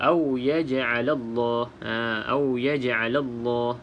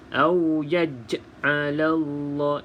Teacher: kalau berada di pertengahan kalimah, maka kita baca dengan lantunan yang sedikit saja, iaitu qalqalah sughra